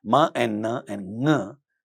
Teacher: Ma and na and ng, these are nasal consonants. One is a bilabial nasal, na is a dental nasal, and ng is a velar nasal.